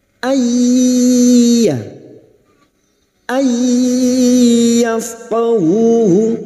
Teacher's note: Akinnatan ay nun sukun bertemu ya idgham bi gunnah, siap masuk dan mendengung masuk pada huruf berikutnya yaitu huruf ya dan mendengung selama 3 harokat